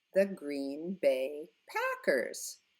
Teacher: Again, we go up on the last word.